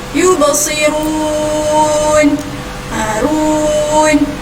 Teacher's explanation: kita baca dia dengan cara mad arid li sukun, iaitu sebanyak 2 atau 4 ataupun 6 harakat.